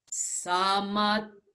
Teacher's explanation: we can feel the vibration at the lips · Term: nasal sound